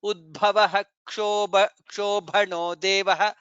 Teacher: maybe you can make it as Kush. It is the combination of K and Cha. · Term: Ksha